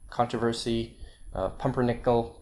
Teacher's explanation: Now occasionally, not too often, occasionally you get -4 stress on the fourth syllable from the end